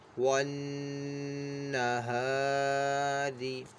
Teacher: نون کی آواز ہلکی سی ناک پہ لے کے جائیں گے اور ایک الف دو حرکات کے برابر اس کو کھینچ کر پڑھیں گے · الف مدہ ہو رہا ہے تو اس کو ایک الف دو حرکات کے برابر کھینچ کر پڑھنا ہے۔ اور یہاں پہ الف کو باریک بھی پڑھا جائے گا کیونکہ الف سے پہلے جو ہے باریک حرف ہے، ہاں یہ باریک حرف ہے تو الف کو باریک پڑھیں گے۔ · اور یہاں پہ الف کو باریک بھی پڑھا جائے گا کیونکہ الف سے پہلے جو ہے باریک حرف ہے، ہاں یہ باریک حرف ہے تو الف کو باریک پڑھیں گے۔ اور یہاں پہ را کو بھی باریک پڑھیں گے کیونکہ را کے نیچے زیر ہے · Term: غنہ